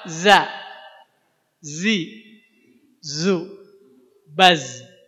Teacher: kalau za itu ujung lidah. Ujung lidah hampir nempel ke gigi seri bagian bawah. Za. Kemudian tambahin sifatnya suaranya kayak lebah.